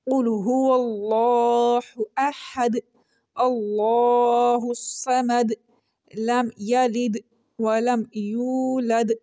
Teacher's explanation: ہر آیت کے اینڈ پہ دال لیٹر ہیں اور آیت ختم ہو رہی ہے، جس کی وجہ سے ہم دال کے اوپر قلقلہ کر رہے ہیں